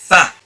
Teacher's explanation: pronounced by attaching the bottom lip firmly against the top incisors. Fa. And not fa, it's fa.